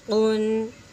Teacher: اس میں اظہار ہو رہا ہے، بلا غنہ ہو رہا ہے، ٹھیک ہے، غنہ نہیں ہو رہا